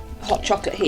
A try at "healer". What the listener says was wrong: Healer. Healer, not heater. Healer, not heater.